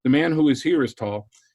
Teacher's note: So the predicate has a higher tone because it introduces the new information. The relative clause almost always has a lower tone because it's giving old information.